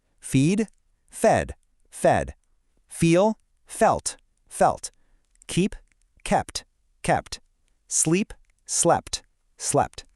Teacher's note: Here, the long e sound shifts to a short e sound for both the past simple and past participle.